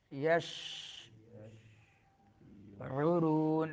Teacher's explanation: عین درمیان حلق سے اور را پر پڑھیں گے اور مدہ ہوگا